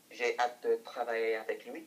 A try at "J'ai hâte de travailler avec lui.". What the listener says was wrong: Good, go long. J'ai hâte de travailler avec lui. Bring up your throat. J'ai hâte de travailler avec lui. Good, and give me a little bit more of a flick on the end of that. So, j'ai hâte de travailler avec lui. So I can hear that it's travail, not travailler.